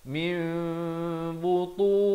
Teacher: bila nun mati bertemu ba ditukarkan kepada bunyi mim, jadi mim dengan kadar panjang dua harakat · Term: hukum iqlab